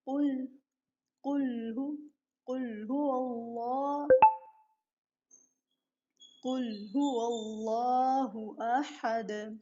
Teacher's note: حروف مستعلیہ میں سے ہے قاف، منہ بھر کر پڑھا جائے گا